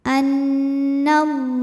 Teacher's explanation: lam jalalah dibunyikan secara tafkhim sebab huruf sebelumnya nya berbaris fathah maka dibacanya l tebal